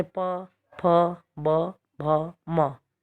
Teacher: ऐसे प वर्ग, तो प वर्ग के व्यंजनों को बोलेंगे तो हमारी जीभ, हमारे दोनों होठ टच होंगे, जैसे प, फ, ब, भ, म। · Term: ओष्ठ